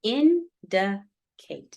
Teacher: the primary stress is going to be that first one, indicate. Okay.